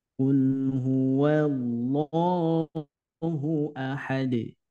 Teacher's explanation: huruf q ini makhrajnya atau tempat keluarnya itu dari pangkal lidah dengan langit-langit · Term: makhraj huruf q